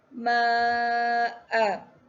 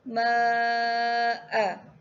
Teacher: hukum tajwid ma wajib muttasil. Cara bacaannya panjang empat atau lima harakat. Untuk bacaan empat harakat, ma'a.